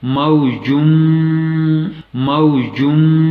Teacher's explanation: یا نون ساکن کے بعد تو ایسے میں ادغام ہوگا، یعنی اگلے حرف کے ساتھ ملانا پڑے گا اور غنہ بھی کرنا پڑے گا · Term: ادغام مع الغنہ